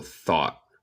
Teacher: En el acento estadounidense comemos el T final